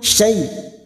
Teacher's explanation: syai' fathah bertemu ya sukun huruf layin kita lunakkan